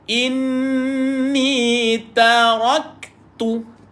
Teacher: Huruf kaf, tuan-puan, keluarkan angin pada dia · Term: sifat hamas